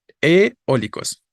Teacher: la vocal que suena fuerte en eólicos es la o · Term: vocal tónica